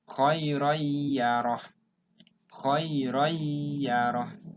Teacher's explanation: kalau orang yang paham, bacaannya N-nya dihilangkan, langsung ke ya. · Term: idgham bigunnah